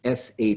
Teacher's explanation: the bar the apostrophe or accent mark over the s indicates it's a deep SH sound which is to say it's an SH that's pronounced all the way in the back of your mouth